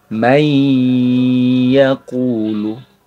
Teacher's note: Dileburkan huruf bunyi nun sukunnya ke huruf idghamnya. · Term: idgham bi gunnah